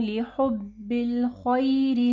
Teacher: یہاں پہ مدلین آ رہی ہے، یا ساکن سے پہلے دیکھیں زبر ہے